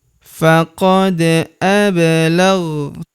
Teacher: Kemudian faqad ablaghtukum. Faqad, huruf da berharokat sukun kita pantulkan atau kita qalqalahkan.